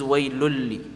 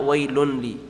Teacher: the noon is not pronounced, and it's also merging into the lam because it's one of the two letters where the noon sakin is going to merge into the letter.